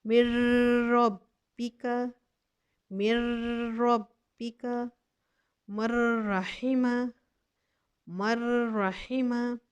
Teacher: نون ساکن کے بعد را آ گیا ہے، ہم نے کہا نون کو را سے ملائیں گے میم کو، لیکن بغیر غنے کے.